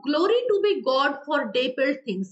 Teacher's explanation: alternative stress पड़ता है, first syllable में स्ट्रेस है, then unstressed, then stress, then unstress, इस फॉर्मेट में चलता है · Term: sprung rhythm